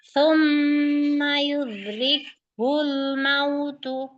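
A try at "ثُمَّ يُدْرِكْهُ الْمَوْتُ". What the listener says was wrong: Lagi. Hulnya tipis. Yudrikhul mautu. Dalnya hilang kolkolahnya lagi.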